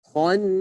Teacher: Kha-nya dibaca dengan mufakhamah tebal.